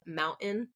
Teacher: Both are correct, but I tend to do that glottal stop is what it's called, mountain, because of where I live in the United States, which is in Arizona. So on that West Coast, there tends to be that glottal stop in a lot of middle T words